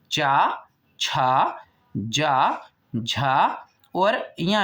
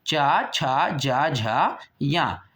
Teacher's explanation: अब हम पढ़ते हैं इसके बाद तालु से जो हमारे मुख की जो वायु है वो तालु को छू करके जब निकलती है या हमारी जीभ जो है वो तालु को टच करती है, स्पर्श करती है, तो इसे चा वर्ग निकलता है। देखें चा, छा, जा, झा और या ईंट का, ठीक है, चा, छा, जा, झा, या। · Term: तालु वर्ग